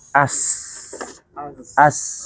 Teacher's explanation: tajamnya suara karena ia keluar dari celah yang sempit antara ujung lidah dengan dua gigi seri atas dan bawah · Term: sofir